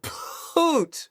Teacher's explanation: You do a P and then there's like an H, which is pure air. And then when you start that ooh, you go poot with an H in front of it.